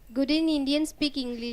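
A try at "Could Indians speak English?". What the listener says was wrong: Could in Indian speak English? This English should be stressed more because yes or no question.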